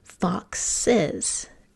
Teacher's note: we say fox is don't we so what happened there is we added a second syllable to the word put your hand under your chin and let's do it fox